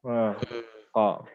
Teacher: Pangkal lidah ketika qaf, Bertemu bagian atas langit-langit. Qaf, pangkal lidah paling belakang.